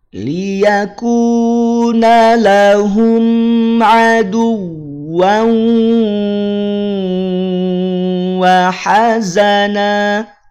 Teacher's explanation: tahan 2 harokat karena tanwin bertemu dengan waw